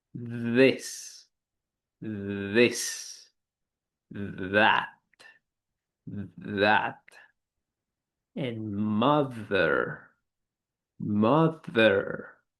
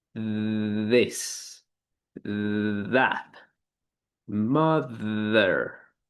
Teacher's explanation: So, moving on to voiced interdental consonant or a voiced sound. Again, we're going to place the tip of the tongue between the teeth, but now we must produce the vibration of our vocal cords in order to properly pronounce this sound.